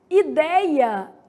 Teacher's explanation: ideia é uma paroxítona porque ela tem a penúltima sílaba como tônica